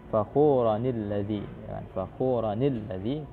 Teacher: Fakhuranil ladzi, fakhuranil ladzi, karena tidak mungkin terjadi iltiqa as-sakinain, bertemu dua huruf sukun, maka salah satunya itu diberikan harakat kasrah.